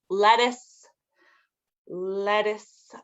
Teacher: We don't really pronounce the T's very much in that one.